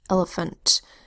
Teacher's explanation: The second and the third vowel sounds in elephant are schwa sounds.